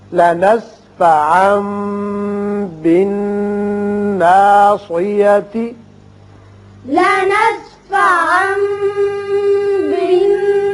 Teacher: یہاں تنوین کے بعد با ہے لہذا اقلاب ہوگا یہاں اور نون مشدد ہے غنہ کریں گے اور صاد کو تھوڑا سا پر کر کے گلائی کے ساتھ ادا کیجئے تاکہ سین معلوم نہ ہو. یہاں آیت ختم ہوتی ہے آپ وقف کر سکتے ہیں تا ہا کی شکل میں بدل جائے گی.